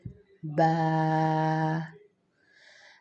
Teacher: با کی ادائیگی کے لیے ہونٹوں کے گیلے حصے کو آپس میں ملانا ہے